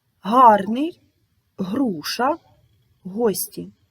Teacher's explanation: подібні букви г та Ґ вони позначають на письмі різні звуки звук г утворюється низько в гортані